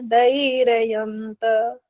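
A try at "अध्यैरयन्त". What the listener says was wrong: एक तो अंत वाला फिर गलत हुआ, धैर्ययंत हो गया, ध्यय होना चाहिए।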